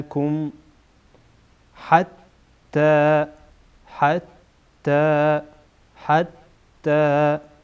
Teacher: حتی را در اینجا پر خوانده میشه